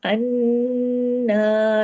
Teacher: अन्ना नून पे तशदीद है और खड़ी जबर भी है, नून की तशदीद की वजह से गुन्ना भी बड़ा करना है और उसको अलिफ के बराबर 2 हरकत अन्ना 2 हरकत खींचना भी है।